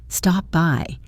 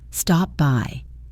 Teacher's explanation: you don't release a hard P sound at the end of stop. Instead, you close your lips to form the P, and then you immediately open them to pronounce by. Stop by. It prevents a pause between the words.